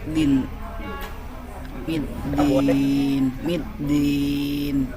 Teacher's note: Dia naik ujung lidahnya di pangkal gigi seri atas, di pohon gigi. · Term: huruf dal